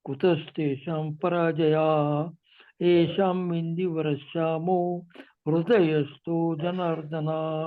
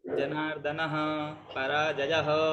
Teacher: ये थोड़ा विसर्ग पराजयः जनार्दनः थोड़ा हा का उच्चारण करेंगे